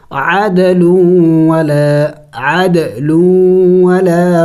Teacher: دال بھی چونکہ حروف قلقلہ میں سے ہے اور ساکن ہے تو قلقلہ کریں گے